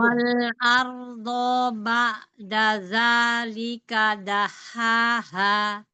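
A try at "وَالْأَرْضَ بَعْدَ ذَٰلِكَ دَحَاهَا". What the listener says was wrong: Baik. Tapi dodnya satu harokat.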